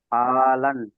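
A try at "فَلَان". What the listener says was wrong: ফা টান হবে না, ফালান।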